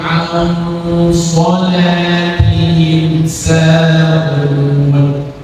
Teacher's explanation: Hati-hati, shad huruf tebal, lam tipis.